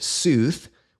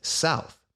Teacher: over time long u in English changes to ow and we end up with South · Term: long oo